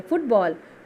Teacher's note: फ में ह्रस्व उ की मात्रा है जिसे हम एक झटके में बोल रहे हैं